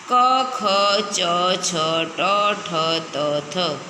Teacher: હવે છે અઘોષ ધ્વનિ. નાદતંત્રીઓ મહદ અંશે અલ્પ માત્રામાં કંપે ની જે ધ્વનિ ઉત્પન્ન થાય તે અઘોષ ધ્વનિ છે.